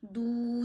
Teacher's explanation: वाऊ साकिन से पीछे पेश आए तो वाऊ को एक अलिफ जितना खींचते हैं। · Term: वाऊ मद्दा